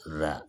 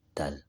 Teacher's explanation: Za itu tengah lidah kita diangkat, za. Kalau ini ujung lidah, dal.